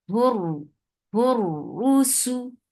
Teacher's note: keep the makhraj of ra engaged when you are saying ra, and there should be a little takrar vibration there.